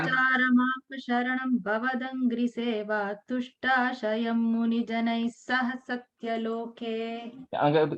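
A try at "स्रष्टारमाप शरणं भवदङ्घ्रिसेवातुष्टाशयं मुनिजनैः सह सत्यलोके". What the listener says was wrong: Just take care of the comma after Sharanam and Tushtasayam, okay? And the pause and the yeah.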